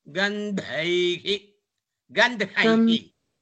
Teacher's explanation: Ga is alpa prana only, not to give stress.